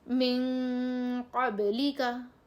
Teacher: نرم غنے کے ساتھ پڑھیں گے، نرمی سے ناک سے آواز نکال دیں گے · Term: اخفا